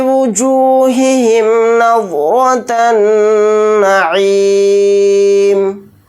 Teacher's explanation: यहाँ पर वाद को मोटा यानी पुर पढ़ेंगे, रा को मोटा यानी पुर पढ़ेंगे क्योंकि रा के ऊपर ज़बर है, फिर नून के ऊपर तशदीद है तो यहाँ पर गुन्ना करके पढ़ेंगे, हालत वक्फ में मीम को साकिन बनाकर पढ़ेंगे।